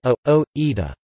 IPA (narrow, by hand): a̯o̞ˈɾita